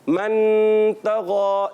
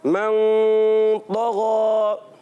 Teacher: ایک الف کا غنہ کرتے ہوئے نون کو چھپاتے ہیں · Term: اخفا